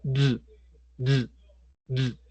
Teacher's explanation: Y toque su garganta y pronuncia el sonido de d, d, d. Estoy seguro que va a sentir vibración.